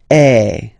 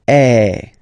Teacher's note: if you combine this vowel A with the vowel I, okay, you will get the sound E. So really open E.